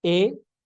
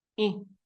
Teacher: el sonido se saca más bien por la nariz Es más bien un sonido nasal